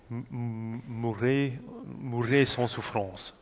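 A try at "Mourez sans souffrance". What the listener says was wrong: When you speak it, it's bright. And when you sing, it's a little bit too dark. Mourrez sans souffrance. Try to sing as you would speak it. Especially in this tessiture. It's the medium.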